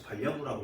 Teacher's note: 즉 니은 첨가는 왜 시키고 있냐라고 할 때 여기서 니은을 첨가시킴으로써 리을이 넘어가는 걸 막는 현상이에요. 즉 연음이 일어나는 걸 막는 현상이 첨가 현상입니다.